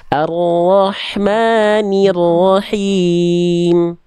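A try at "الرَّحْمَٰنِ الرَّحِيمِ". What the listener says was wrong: Himnya bagus, ne-nya masih nir. kenapa I-nya itu kayak karena kita udah bersiap-siap fokus ke ro-nya. Jadi jangan sampai. Jadi ni-nya tuntaskan dulu. Ni, ro, niro.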